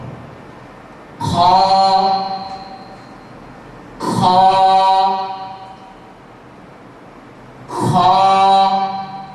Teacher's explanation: স্বাভাবিকভাবে এই হরফটি অন্য হরফের চেয়ে মোটা, আওয়াজ মোটা হবে